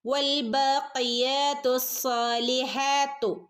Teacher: സ്വാദിനെ ഒന്ന് കനപ്പിക്കുകയും വേണം, രണ്ടനക്കം നീട്ടുകയും വേണം